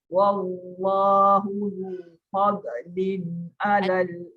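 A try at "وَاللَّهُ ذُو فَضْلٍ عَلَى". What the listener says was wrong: Ada bunyi dot tu. Ada bunyi qalqalah tu. Fadlin.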